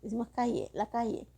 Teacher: El yeísmo que pronunciamos de igual manera la Y y la L